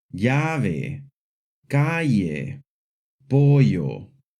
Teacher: Two L's together make a hard Y sound, like in the words llave, calle, pollo.